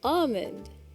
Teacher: You don't really pronounce the L.